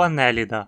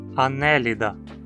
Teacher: O radical ida sempre tem i curto. Então a penúltima sílaba não tem requisitos para ser longa e precisamos falar anélida.